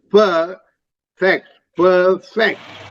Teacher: so it's perfect the stresses on the first syllable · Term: syllable stress